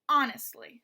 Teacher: that first syllable is stressed